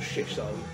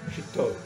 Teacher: the emphasis is very much on the second syllable